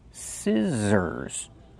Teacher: The middle consonant is the Z sound like zebra. Make the voice Z.